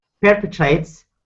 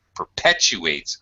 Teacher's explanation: there's a w between the U and the a here in the middle we have a Glide when we use a w or a y sound to join